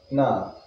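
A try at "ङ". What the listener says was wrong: Tongue touches. No, that's not the place. Place I'm telling you, Kantasthana. Kantasthana is not here, but in the inside there. See, you watch where the ka, kha, ga, gha are coming. Ka, kha, ga, gha, nga. Slightly different, not exactly, slightly around that area. Nga, that is it. Like going, they say ng, that place.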